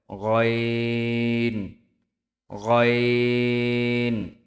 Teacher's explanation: কণ্ঠনালীর শেষ থেকে উচ্চারিত হয় গইন।